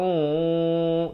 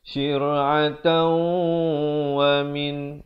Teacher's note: Syir'atau di sini idgham bi gunnah. Tanwin bertemu waw dibacakan dengan masuk beserta dengung 2 harakat.